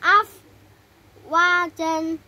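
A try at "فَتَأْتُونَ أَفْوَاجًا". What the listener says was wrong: panjang ada alifnya itu.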